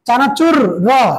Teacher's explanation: এই র এর উচ্চারণের সময় কি হচ্ছে, কাঁপতেছে কিনা? এইটা হচ্ছে কম্পনজাত বর্ণ।